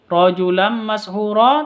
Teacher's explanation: tanwin bertemu dengan mim cara bacanya masuk ke mim disertai dengung du dua ketuk Kenapa karena Nah masuk ke mimnya disertai duk